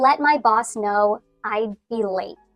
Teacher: I'd be late goes down in inflection